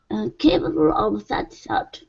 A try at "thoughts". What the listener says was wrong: Okay, add an S at the very end. Capable of such thoughts. So you're saying thought, give me an S at the very end. Thoughts.